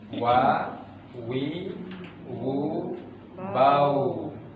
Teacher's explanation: Huruf waw adalah huruf yang keluar dari bibir. Ya, caranya adalah dengan memajukan bibir ini ke depan.